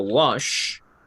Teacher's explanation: termina en el sonido sh. No vibran mis cuerdas vocales. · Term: consonante sin voz